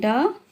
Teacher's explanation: ड का उच्चारण स्थान मूर्धा होता है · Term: मूर्धन्य